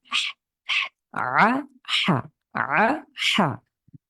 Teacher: কণ্ঠের মাঝখান থেকে কণ্ঠে চাপ দিয়ে মনে হবে যেন একটু কষ্ট হচ্ছে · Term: আইন